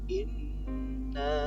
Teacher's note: ada nun tasdid, maka bisa kita sebut dengan bacaan hunnah. Bacaan hunnah. Jadi cara membacanya berdegung.